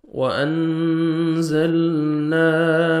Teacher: اخفا کریں گے نون ساکن کے بعد حروف اخفا میں سے جو 15 لیٹرز ہیں زار ہے، آپ نے نوز میں ساؤنڈ لے کے جانا ہے، لام کو آپ نے ہلانا نہیں ہے، الف مدہ 1 سیکنڈ آپ نے نون کو کھینچنا ہے۔